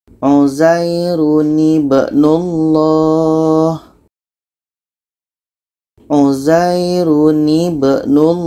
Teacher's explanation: Tanwin ini kita buang barisnya satu, kita ganti dengan nun yang berbaris di bawah. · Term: nun wiqayah